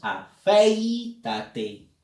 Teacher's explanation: te das cuenta de que la vocal que lleva fuerza de voz es la E, no es la I